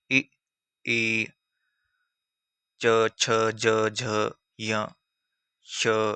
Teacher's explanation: तालु से। जीभ जो है तालु से टकराती है